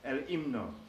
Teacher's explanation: The H in Spanish is always silent unless it's together with the C forming the ch sound. But when you see an H alone, it's usually not pronounced. It doesn't even lengthen the vowel or anything else. It's just there for space, really.